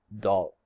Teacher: If L comes first, it is pronounced as a clear frontal L, as also in clear, and if the vowel comes first, L is released as a dark, more back L